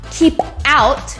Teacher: pretend in your mind like the p is actually on the o of the out